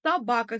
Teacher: Собака сөзінде екпін ударение екінші буынға түсіп тұр